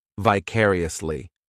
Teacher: This adverb has 5 syllables, and the stress is on that second syllable, vicariously. The third syllable, it's like that letter I just has that E sound, and the fourth syllable has the schwa